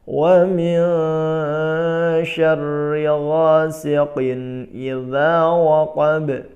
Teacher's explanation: Wa min ikhfa dibaca dengung dan jangan tergesa-gesa, ditahan dulu